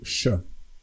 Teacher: but this s with the roof it's actually soften softened so the S would be softened to sh